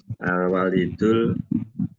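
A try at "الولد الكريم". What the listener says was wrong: Jangan walidul. Kalau walidul itu harus wanya dibaca panjang, Bapak. Kalau dielinya kasroh, al-walidu bukan gitu. Waladun ini. Waladu. Al-waladul.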